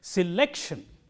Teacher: the syllable immediately coming before shun is lek. So, lek is stressed